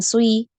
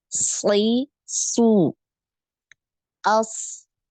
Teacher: tadi ya karena punya sifat Isti dan juga itbaq ya Ee hurufnya tebal ya tebal sekali maka ketika kasrh pun dia tetap tebal ya tetap tebal ya tapi bukan Sui gitu ya jangan Sui